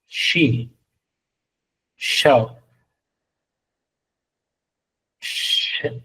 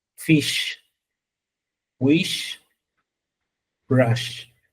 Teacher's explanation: es el sh, ¿sí? El sordo, o sea, no vibratorio